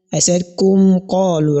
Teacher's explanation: So whenever any of the letters of izhar comes immediately after mim sakina, you are clearly going to pronounce the sound of the mim so that it will be clearly heard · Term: izharun shafawi